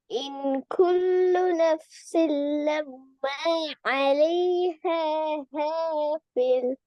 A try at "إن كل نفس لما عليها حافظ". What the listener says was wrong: ஹாஃபில். சின்ன ஹே வரல கடைசியா. அதை உடைக்க கூடாது. அலைஹா ஹாஃபில் சேர்ந்து வரணும்.